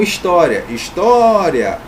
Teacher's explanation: é mais forte tá aqui na penúltima sílaba é paroxítona terminada em ditongo acentua Beleza então é isso gente